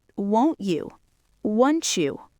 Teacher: in natural conversation, the T and the Y collide.